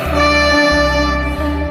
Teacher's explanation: জিহ্বার আগা উপরের দাঁতের আগা লাগিয়ে বলতে হবে তা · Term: তায়ের মাখরাজ